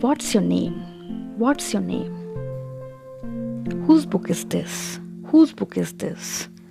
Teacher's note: there should be a fall in a voice tone at the end of the sentence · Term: falling intonation